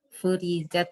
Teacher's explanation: Ri dibaca tipis karena kasroh.